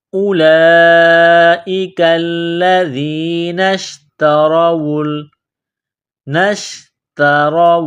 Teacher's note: ذال کو یا کے ساتھ ملانا ہے، دال کو نرم کرنا ہے، نون کو شین کے ساتھ ملانا ہے